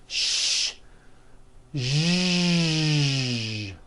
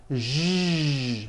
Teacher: To produce this sound, first make a sh sound, and then you add voicing. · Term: voiced SH sound